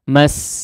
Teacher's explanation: Nah, di sini ada penekanan atau hentakan suara ketika masuk kepada huruf sinnya ya. Jadi tidak lurus begitu saja, minal mas ya.